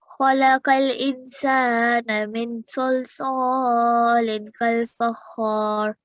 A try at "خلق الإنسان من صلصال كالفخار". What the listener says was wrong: Much better, really good, well done.